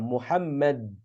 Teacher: jadi lidah berhenti pada pada makhraj huruf Dal